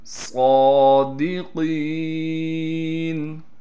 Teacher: دال کو صاف کر کے پڑھیں گے، قاف کو موٹا کر کے پڑھنے کے ساتھ قاف کے بعد یا مدہ ہونے کی وجہ سے قاف کو 1 الف کی مقدار کھینچیں گے